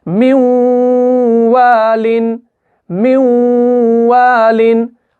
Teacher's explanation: यहां पे नून साकिन है और इसके बाद वाव मुशद्दद वाला आ रहा है, तो यहां पर क्या होगा, इदगाम गुन्ना के साथ होगा